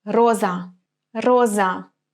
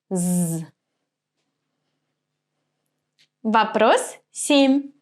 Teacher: Z is a voice consonant when I pronounce it my vocal cords vibrate